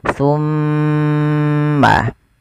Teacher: Ketika ada mim, mim berharakat tasydid. Cara membacanya ditahan suara mimnya. Summa. Nah, langsung ke ta. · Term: bacaan gunnah